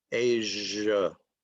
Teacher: the S in Asia is zh, and it is voiced